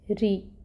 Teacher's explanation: را کے نیچے زیر ہے، کسرو، اس وجہ سے را کو ہم باریکی سے ادا کریں گے، ری۔ پھر عین ہے، عین کو ہم وسط حلق سے نکالیں گے اور اس کے اوپر جو فتحہ کی حرکت ہے اس کو 1 کاؤنٹ پڑھیں گے۔